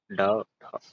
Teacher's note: जिसके उच्चारण में जीभ ऊपर उठकर झटके के साथ नीचे को आए उसे क्षिप्त व्यंजन कहते हैं।